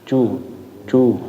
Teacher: kalau cu itu lebih ke depan ya, depan banget kayaknya. Cu ya, lidahnya bagian depan banget.